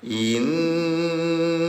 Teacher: Nun dalam keadaan tasdid namanya gun. Nah, dengungkan cara bacanya selama dua harakat.